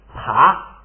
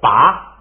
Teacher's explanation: 你看它就变送气变不送气了，爬是送气，拔不送气